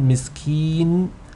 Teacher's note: make sure that the noon the nasal sound of the noon doesn't kick in prematurely so in the word miss keen when you are elongating with